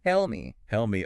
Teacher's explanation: the P sound at the end of help is often not fully released before the M of me. So it sounds almost like one unit.